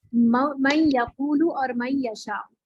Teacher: اور جو ناقص ہو رہا ہے اس میں دیکھیے نون کا واو میں ہو رہا ہے تو نون اپنا غنہ برقرار رکھے گا, نون کا یا میں ہو رہا ہے نون اپنا غنہ برقرار رکھے گا تو ناقص ہو رہا ہے.